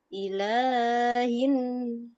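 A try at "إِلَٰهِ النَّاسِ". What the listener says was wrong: Ilalahnya jangan terlalu panjang.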